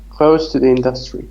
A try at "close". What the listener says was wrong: So when close means near, it is pronounced with se sound. When it means the opposite of open, it is ze. Yeah, because here it means near or proximity. It shows proximity or nearness. So it should be pronounced with se sound.